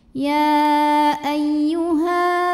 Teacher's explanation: Alif yang sebelumnya berbaris fathah maka cara bacanya panjang dua harakat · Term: Mad Thobi'i